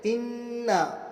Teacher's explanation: انا تشدید کے ساتھ گنہ بھی کریں گے اور ایک الف کھینچ کر پڑھیں گے